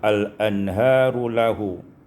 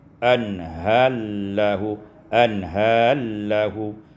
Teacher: idghamur ra fil lam, diidghamkan ra pada lam sehingga dibaca anhallahu.